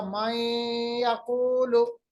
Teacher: एक तो हमने मिलाया, इदगाम किया, दूसरा हमने गुन्ना भी किया, नाक के बांसे में आवाज को ले गए। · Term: इदगाम बगुन्ना